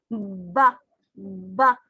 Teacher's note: अब ये दोनों जब टकराते हैं थोड़ी सी हवा फिर रुकेगी, जैसे बोल के देखे, बा बा, हवा रुकी और एकदम से कॉन्टिन्यूसली एक्सप्लोजर करके हवा बाहर को निकली जो हमारी एयर स्ट्रीम से आ रही है। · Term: बाइलेबियल साउंड्स